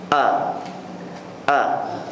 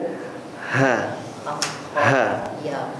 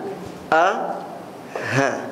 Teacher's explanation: artinya halq hal kerongkongan ya Ada tiga tempat ya Di mana huruf-huruf izhar itu keluar ya daripada kerongkongan ada di Pangkal kerongkongan